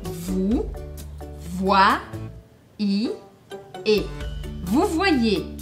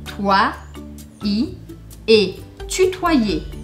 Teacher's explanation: o primeiro I faria a combinação com a letra O e eu falaria wa, língua. E o segundo I, hipotético, eu pronuncio.